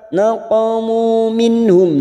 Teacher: nun sukun bertemu ha, idhar halki. Kita baca jelas tanpa mendengung. Setiap ada nun sukun atau tanwin yang bertemu dengan 6 huruf ini, maka dibaca jelas tanpa mendengung.